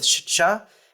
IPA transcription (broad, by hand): ʃtʃ